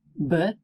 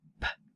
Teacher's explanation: They're made exactly the same way except one is voiced, b, and the other is unvoiced, p.